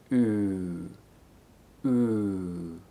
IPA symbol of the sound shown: u: